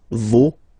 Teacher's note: even if you've got this final s, you don't pronounce it